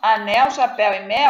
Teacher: Então, anel, chapéu e mel, apesar de uma terminar em L e outra em U, o som é igual